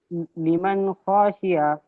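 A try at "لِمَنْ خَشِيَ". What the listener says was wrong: লিমান খসিয়া, খটা কিসে টান হচ্ছে, খ বলে টান দিচ্ছেন কেন?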